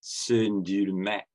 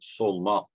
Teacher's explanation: Sündürmek, all the vowels are front, but solmak, all the vowels are back. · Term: backness harmony